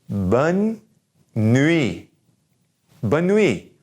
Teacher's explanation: That last T is going to be silent.